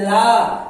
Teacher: ला जब बोलेंगे तो आपकी जीभ दांत पे जाकर टकराती है, इसलिए ये भी क्या हो गया, दंत हो गया, दंत से उच्चारित होता है।